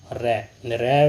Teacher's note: रै व्यंजन को प्रकंपित बोला जाता है